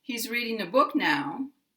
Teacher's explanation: My voice falls at the end. And because now is a one-syllable word, it's kind of a little glide down. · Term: intonation